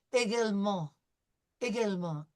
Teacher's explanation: we have en, so we know that this is going to be a nasal sound. And because it's a French word, we're probably not going to pronounce that T, right?